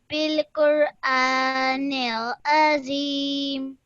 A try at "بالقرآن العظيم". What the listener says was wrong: Excellent. Well done.